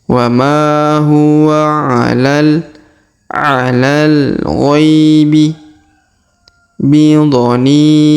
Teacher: Huruf gha diayun sekali karena di depannya terdapat ya sukun.